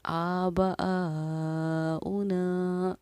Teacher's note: 4 الف کے مقدار کے برابر ہم اس کو کھینچ کر پڑھتے ہیں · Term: مد متصل